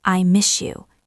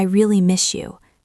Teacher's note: In fast speech, the S and the Y blend.